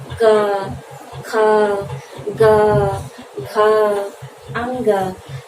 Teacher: जो वायु जो हमारे कंठ को स्पर्श करती है, बाहर निकलती है, तो वह क वर्ग हो जाता है, इसलिए इसे कंठ कहते हैं।